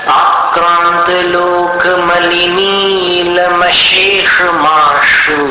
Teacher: बीच वाले श को हल्के से बोलना है, मूर्धन्य श, और बाकी दोनों जो तालव्य श है उसमें तालु के ऊपर दबाव डालकर श।